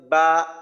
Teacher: দুই ঠোঁট থেকে উচ্চারিত হয়